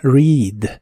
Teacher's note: la e de esta palabra se pronuncia como una I larga o doble